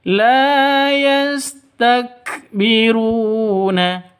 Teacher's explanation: ru panjang dua ketukan karena ada wa mati diawali dengan dommah. Mad asli atau mad thobi. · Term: Mad thobi'i